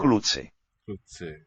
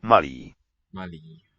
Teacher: The long vowel stays higher.